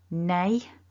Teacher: i don't want that it's a si stressed syllable strong nay so that's a double vowel with the a and a nasal na nay and then that shun ending which is a very